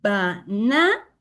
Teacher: So in the first and in the third, we have to use schwa sound. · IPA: /ə/